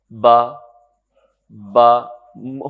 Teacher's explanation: اور با کیسے ادا ہوتا ہے, ملے ہوئے ہونٹ کھولنے سے. با, با, ہونٹ ملے ہوئے ہیں, آپ ان کو کھول دیں تو با کی ساؤنڈ ہے